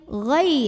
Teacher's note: ada huruf lin, karena ada ya sukun yang didahului baris fathah, maka cara bacanya cukup kita lembutkan